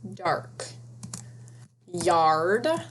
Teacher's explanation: You hear the R sound in the middle of the word, and the consonant D shuts off that R sound.